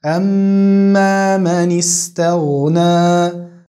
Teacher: Bei ميم haben wir eine Shadda, also eine verlängerte Gunna.